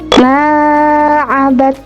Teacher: mim dibaca panjang 2 harokat karena berharokat fathah dan diikuti dengan alif sukun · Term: mat tabi'i